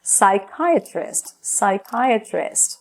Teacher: Esse P no início da palavra a gente não pronuncia